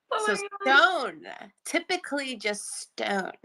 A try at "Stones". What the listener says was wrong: No, Stones with a Z.